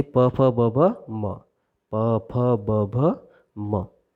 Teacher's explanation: दोनों लिप्स एक दूसरे को स्पर्श कर रहे हैं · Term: ओष्ठ